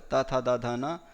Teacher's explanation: लृकार तवर्ग त थ द ध न और लकार और सकार का उच्चारण स्थान दंत होता है।